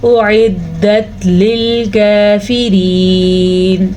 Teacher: کاف باریکی سے پڑھا جائے گا، را کو بھی باریک پڑھیں گے کیونکہ را کے نیچے زیر ہے، اور یہاں پہ وقف کر لیں گے.